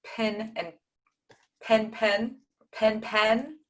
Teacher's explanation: before a nasal these two sound like the same vowel category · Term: the pin pen